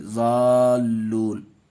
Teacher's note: ملانے کے ٹائم ذلون نہیں پڑھیں گے بلکہ ذال مد کر کے پڑھیں گے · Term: مد لازم